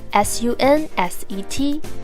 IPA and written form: ˈsʌn.set (sunset)